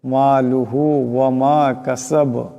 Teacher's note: বা সাকিন হয়ে গেলে আওয়াজটা ঝটকা খাবে